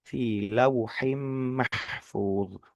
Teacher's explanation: Huruf ha. Pastikan huruf ha itu ada di ee tenggorokan tengah